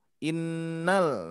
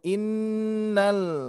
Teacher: di sini ada lam sukun, Bu, ya. Jadi langsung innal. Nalnya jelas.